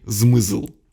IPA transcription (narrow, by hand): zmɨzɫ